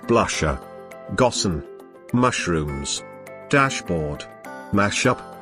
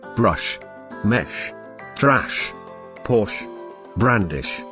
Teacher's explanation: the she sound is a voiceless palato alveolar fricative sound it is voiceless because there is no vibration of the vocal cords